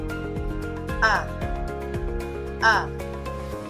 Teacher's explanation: Titik A naman binibigkas ito sa sentral at mababa.